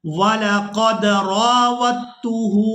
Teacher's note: अब यहाँ पर हमने वाओ को ता मुशद्दद के साथ मिलाना है, दाल साकिन को हमने छोड़ देना है।